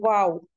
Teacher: तो वाव भी लिप्स का ही मखरज है। वाव में क्या होता है कि हमारे होठ गोल हो जाते हैं। दोनों होठ करीब तो होते हैं लेकिन मिलते नहीं हैं, वो गोल हो जाते हैं, वाव।